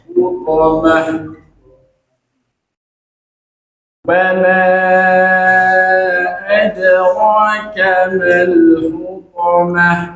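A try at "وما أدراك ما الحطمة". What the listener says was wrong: Bukan to lebih manyun daripada hu lebih manyun daripada to, kebalik gitu.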